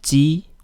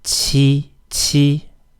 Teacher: instead of d we have t t notice air is coming out t this is very similar to the russian as in yest · It's exactly the same as ji, except for a little h at the end. That represents a puff of air. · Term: qi sound